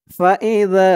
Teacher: জালের উচ্চারণটা একদম নরম করতে হবে জিহ্বার মাথা উপরের দাঁতের মাথার সাথে লাগবে